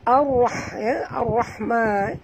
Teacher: Ya, ra ada dua kat sini dan tebal. Ra apabila dia mati dan baris atas kena baca tebal